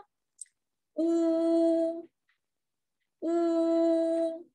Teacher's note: 读的时候呀，小朋友们一定要把小嘴巴撅起来啊，小嘴要突出一点。呜， 读的时候嘴巴撅起来，露一个小口，然后你的舌头呀要往后缩。